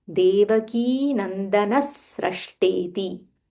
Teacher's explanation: So Visarga followed by Sa. So when we join, we say Devaki Nandanas Srashteti